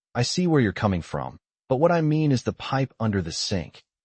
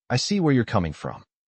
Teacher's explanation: As a listener, I noticed the stress on coming and mean. Those words carry the empathy.